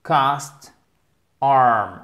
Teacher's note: ça se prononce par le même son. Entre le A et le O et long.